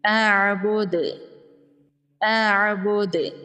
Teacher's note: اعبد، اعبد، یہاں پر دال حروف قلقلہ میں سے ہے، وقف کی صورت میں دال ساکن ہو جائے گا اور دال پر قلقلہ ہوگا